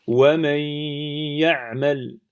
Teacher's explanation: la lettre nun, elle n'a pas disparu, mais elle est rentrée dans le ya. Qui dit rentrer dit, il y a la présence de la runna dans le ya, puisque le nun possède une runna. · Si je bouge mon nez, wa man ya'mal. On entend bien la runna sur le ya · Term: al-idram